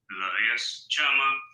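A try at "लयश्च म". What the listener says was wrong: No, you're losing control on the ma at the end. Don't lose.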